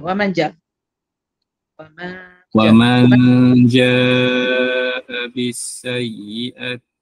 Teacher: Wa man dia bunyi lain dengan wa man lain ya. Wa man dia sembunyi di huruf jim.